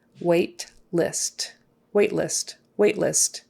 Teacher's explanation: that t is going to be very short